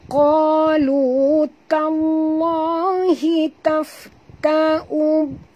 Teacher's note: Masukkan bunyi ta terus ke dalam lam, disertai dengan jut. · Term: alif lam syamsiah